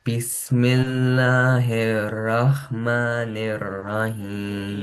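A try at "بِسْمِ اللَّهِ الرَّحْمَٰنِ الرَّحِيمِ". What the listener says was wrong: Yeah, and one more thing, you have to read raw, both raw with bold sound. Great, but you are not reading fully bold, so you need to practice this here, rah, rah, rah, like that.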